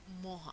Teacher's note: ese aire que sale por la nariz se transfiere a la vocal anterior